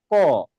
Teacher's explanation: দেখেন আপনি যখন ক উচ্চারণ করেন তখন আপনার ফুসফুসারিত বাতাস এই যে জীভার গোড়া এই গোড়াতে এসে আটকে যায়। যখন বাতাসটা ছেড়ে দেওয়া হয় তখনই উচ্চারণ হয় ক। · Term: কন্ঠ ধ্বনি